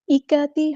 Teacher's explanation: حمزہ کی آواز کو واضح ادا کرنا ہے۔ ملائکتی اس طرح نہیں، چھپانا نہیں ہے، یا کی طرف مائل نہیں کرنا۔ ملائکہ، ایکاتی کاف باریک ادا کرنا ہے، تا کو لمبا نہیں کرنا، حرکات کو لمبا نہیں کرتے۔